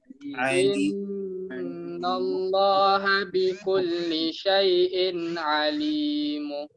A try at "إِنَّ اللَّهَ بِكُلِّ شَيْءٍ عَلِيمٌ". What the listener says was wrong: ما في مد يا شيخ، ما في مد، قصر دوا حركة. عليم.